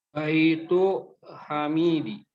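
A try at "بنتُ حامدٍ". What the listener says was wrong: Bukan baitu. Ada titik di atas. Anak perempuan. Hamidin pakai tanwin. Bintu Hamidin. dia tidak karena dia nggak pakai alif lam, maka dia harus pakai tanwin, ya. Bintu Hamidin.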